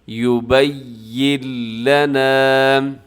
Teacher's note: بغیر غننے کے آپ نے یا کو لام کے ساتھ ملانا ہے، اس میں نون کی آواز آپ نے نہیں دینی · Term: ادغام تام